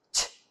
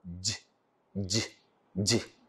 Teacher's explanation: The vocal cords are wide apart for ch and they are made vibrate for j.